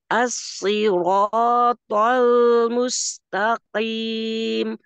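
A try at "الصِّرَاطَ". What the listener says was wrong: masihnya Iya masih menebal sekali lagi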